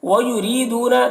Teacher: را کو باریک پڑھیں گے، یا مدہ ہے ایک الف کے برابر کھینچیں گے